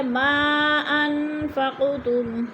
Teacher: ما پہ مد منفصل ہے، 4 الفی مد ہے، ہم نے اس کو 4 الف کے برابر لمبا کر کے پڑھنا ہے۔ ان پہ اخفا ہو رہا ہے، نون ساکن کے بعد فا گیا تو ادھر اخفا، فقتم، قوف حروف قلقلہ میں سے ہے، اس کو ہلا کر پڑھیں گے۔